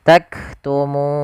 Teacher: Sukul karena waqaf maka muna menjadi taktumun. Nah, di sini munya panjang dulu baru matikan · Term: mad arid